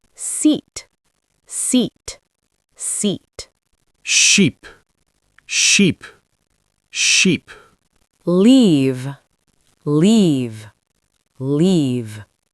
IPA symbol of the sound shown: iː